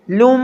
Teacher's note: دو پیش ہیں اور میم اس کے بعد مشدد ہے، یعنی لام کو میم کے ساتھ سختی سے جوڑ کر پڑھیں گے اور میم مشدد پر غنہ کریں گے